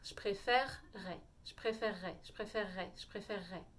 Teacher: ça suppose que vous sachiez faire un R français, donc bien au fond de la gorge, et de faire un double R, comme un double R.